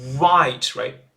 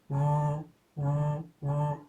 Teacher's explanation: Actually the tongue position is the same. The difference is mouth shape. The English one is rounded mouth.